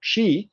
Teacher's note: Then the next word was keake, and of course you know that we don't say keek today, we say cheek, and that means that the first consonant was palatalized, but the second one was not